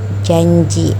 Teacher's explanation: Terdapat huruf Y di situ karena J itu letaknya ada di palatal.